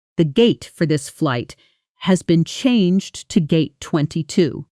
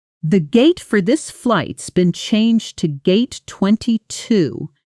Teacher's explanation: has been compresses into something closer to s been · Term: Connected speech